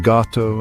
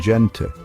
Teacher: Spanish employs both a hard G and a soft aspirated H sound